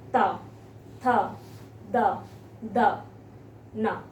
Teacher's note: जब आप इसको बोलिए, आपकी जीभ आपके दांतों को स्पर्श करती है।